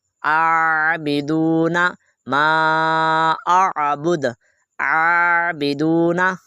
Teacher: عین کو ادا کرنا ہے، حمزے کو ادا نہیں کرنا ہے، اس کو تھوڑا سا لمبا بھی کرنا ہے